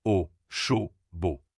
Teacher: Au fermé, ta bouche est plus arrondie et tes lèvres avancent.